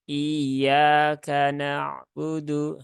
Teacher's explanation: seolah-olah tasdidnya hilang, nah, kemudian hamzahnya ini terbaca panjang